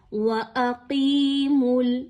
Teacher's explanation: واو باریک، حمزہ بھی باریک، صرف قاف کا حرف جو ہے وہ اس لفظ میں موٹا پڑھا جائے گا